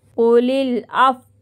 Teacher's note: واؤ کی آواز ہلکی سی صرف ہونٹوں کو گول کر دیں گے، واؤ کو ساکین کر دیں گے یہاں پر.